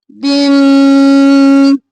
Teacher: ادغام مع الغنہ، با کو میم میں مدغم کیا غنہ کرتے ہوئے